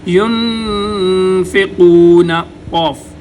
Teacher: زبان کو اوپر والے تالو کے نرم حصے پر لگائیں گے تو موٹا قوف ادا ہوگا